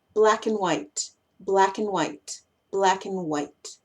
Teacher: Y más encima, si esa palabra no es importante, uno tiende también a querer acortar esa palabra. Y cuando acortamos la palabra, eliminamos su A, eliminamos su D y nos quedamos con la N